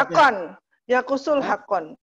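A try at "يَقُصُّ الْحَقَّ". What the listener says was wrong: Hakko, nggak usah tanwin. Karena alif lam. Yakusul hakko.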